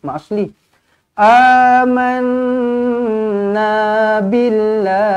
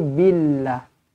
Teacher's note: lafzul jalalah dibaca dengan nipis kerana huruf sebelumnya berbaris bawah